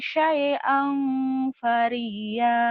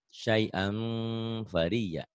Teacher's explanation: Nah, ini kalau ketemu fa, angnya jangan ang. Ada M-nya. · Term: Ihfa